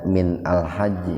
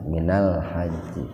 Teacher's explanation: kalau seandainya adanya di tengah-tengah kalimat atau di tengah-tengah kata, itu hamzahnya nggak diaktifkan gitu, nggak dihidupkan. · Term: hamzah zaidah